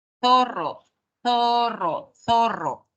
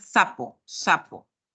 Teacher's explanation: las personas ya en vez de pronunciar la interdental lo pronuncian como alveolar